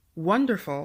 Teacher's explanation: For number 4, wonderful, the WON is stressed.